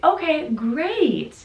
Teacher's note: upward downward intonation on great